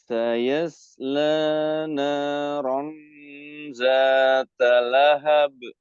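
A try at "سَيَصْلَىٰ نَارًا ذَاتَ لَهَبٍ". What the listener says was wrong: Perhatikan sini huruf za, diingat lagi ya, ujung lidah bertemu dengan gigi seri depan. Za. Naradza.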